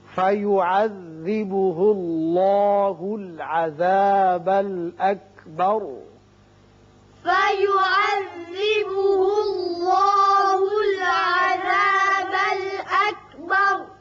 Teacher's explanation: اللہ کا لام پر ہوگا اس لیے کہ پیچھے پیش ہے، اور یہاں را پر پڑا جائے گا.